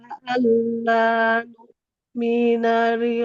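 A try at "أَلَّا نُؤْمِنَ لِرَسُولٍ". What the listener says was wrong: Mimnya jangan panjang. Alla nu'mina.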